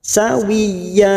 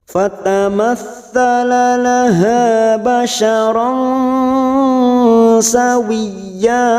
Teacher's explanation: Rasa, sawiyya, wiyya masuk ke huruf ya yang bertasdid tanpa ditekan lama-lama, hanya masuk wiyya. Ya-nya kita panjangkan 2 harokat karena di sini ada fathatain yang dibaca waqaf, namanya hukum bacaan mad iwad, cabang dari mad tabi'i, tidak boleh lebih dari 2 harokat, mutlak 2 harokat.